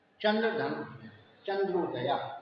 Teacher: चंद्र का आ तथा उदय का उ मिलकर ओ हो गए हैं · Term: संधि